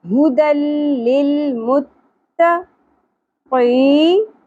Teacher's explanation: جو ہمارے تالو کے ساتھ اوپر نرم والی سائڈ پر ایک گوشت کا ایک ٹکڑا نظر آ رہا ہے آپ کو، وہ والی سائڈ لہات کہلاتی ہے، ٹھیک ہے. تو قاف کو ہم لہات سے ادا کریں گے نرم تالو سے